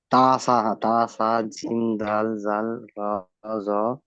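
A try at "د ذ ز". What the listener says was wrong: না, দাল জাল র নয়, দাল জাল জা,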